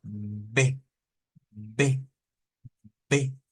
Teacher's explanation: uniendo nuestros labios y haciendo esa vibración de b b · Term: B bilabial